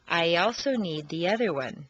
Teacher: after a long e sound your lips will be pulled back far enough to create a yeah Glide or liaison